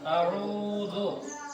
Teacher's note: اعوذ پہ واو مدہ ہے تو اس کو بھی ایک الف کے برابر کھینچیں گے